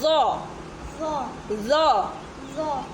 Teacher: ज़बान की नोक जब सामने वाले दो दांतों की नोक पे लगती है तो अदा होता है ज़।